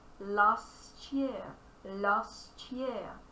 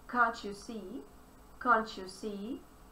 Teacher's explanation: Together, T sound as well as Y sound combine and they produce the sound CH.